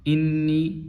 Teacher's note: انی، یہ بھی اور یہ بھی یہاں پہ دونوں مد ہوں گی، یہاں پہ دو الفی مد ہوں گی، مختصر مد کریں گے، زیادہ لمبی نہیں کریں گے۔